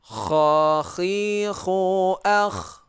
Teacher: Ini juga hukumnya masih sama, idhar juga. Ini keluarnya di tenggorokan paling atas